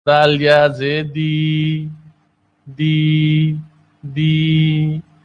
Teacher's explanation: نرمی والے حروف میں ہے. دال کی ادائیگی زبان کی نوک ثنایا اولیاء کے کنارے پر لگ کر ہوتی ہے